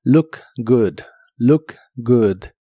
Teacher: la doble O de good se pronuncian como si fueran una U corta y explosiva.